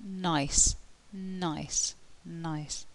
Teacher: the tongue is there and the air flow is being blocked and escaping through the nose